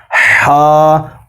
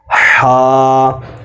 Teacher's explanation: ہا کی آواز ٹھنڈی حلق سے نکلے گی، ہا۔ اور یاد رکھیں اس ہا میں اور گول ہا میں فرق رکھنا ہے۔